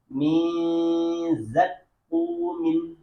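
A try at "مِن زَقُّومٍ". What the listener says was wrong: Suaranya, ya dari suaranya itu kejauhan lidahnya.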